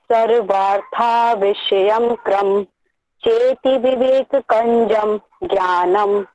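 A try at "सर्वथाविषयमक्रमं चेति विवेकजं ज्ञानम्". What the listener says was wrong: इसे ना सर्वार्था, इसे सर्वार्था ना कह के सर्वथा सर्वथा विषयम क्रममम चेति विवेकजम ज्ञानम.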